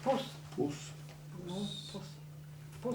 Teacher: No, it's low front rounded vowel.